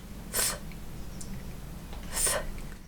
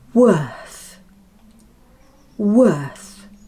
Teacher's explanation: The last sound is th, like the th in thank you. The tongue comes forward and just peeps out of the teeth.